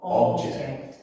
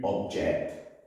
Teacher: if the word is a noun then the stress normally comes on the first syllable in the word so for example object but if it's a verb the stress is normally on the second syllable